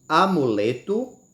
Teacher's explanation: essas duas palavras a sílaba tônica sendo a penúltima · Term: paroxítona